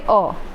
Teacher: इसके उच्चारण में जीभ का मध्य भाग थोड़ा सा ऊपर उठता है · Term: केंद्रीय स्वर